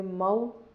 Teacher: میم پہ زبر ہے، آگے واو ساکن ہے تو اسے سافٹ پڑھیں گے، نرم پڑھیں گے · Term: حروف لین